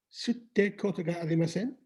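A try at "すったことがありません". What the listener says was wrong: Not sutte, but not te, but sutta.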